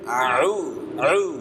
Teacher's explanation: Ain keluar dari tenggorokan bagian tengah sama dengan huruf Ha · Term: huruf Ain